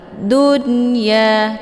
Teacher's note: Dunya, nunnya dibunyikan secara jelas atau diidharkan. Dunya cukup ditekan saja, tidak perlu ditahan. Ya dibaca panjang 2 harokat, mat tabi'i zahiri, yaitu ada alif sebelumnya harokat fathah.